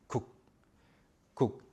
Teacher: Unlike in English and many other languages, in Korean when you say 국, this, letter can represent something like G or K, but you don't say gug or you don't say guk. You just stop it there. 국, 국. The 기억 just stops there.